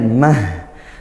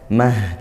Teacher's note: tak marbut sama dibunyikan huruf ha sukun ya mah gitu waaknya lanjut di ayat yang keemp w kita